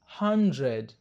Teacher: wazungu wanabadili D na kuitamka kama J kwa sababu kwa lafudhi zao wanapata shida kutamka D na R pamoja